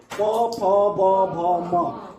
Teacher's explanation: पवर्ग का उच्चारण स्थान जो है ओष्ठ होता है।